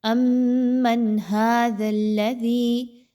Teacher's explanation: نون کی آواز کو بڑا کلیئر کر کے پڑھنا ہے، اوننا نہیں کرنا